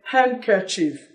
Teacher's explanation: in handkerchief the D is gone